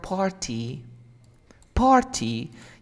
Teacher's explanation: when we have an R and a T and then a vowel sound, you often omit the T sound